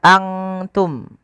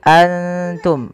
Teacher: Apabila ikhfa itu terjadi apabila ada nun sukun atau tanwin bertemu dengan salah satu huruf ikhfa, di antaranya adalah huruf ta. Cara membacanya, samarkan nunnya kepada makhraj daripada huruf ta. Kalau makhrajnya misalkan ta itu makhrajnya adalah perbatasan ujung sari kita, ujung lidah kita menempelkan dengan di atas itu gusi atas dan gigi sari atasnya, ya, di perbatasannya, di ujung pangkalnya.